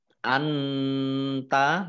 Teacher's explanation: nun sukun bertemu dengan huruf ta, bacaan ikhfa, dibaca samar-samar